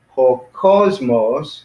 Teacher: Ho cosmos, because the accent's on the first syllable.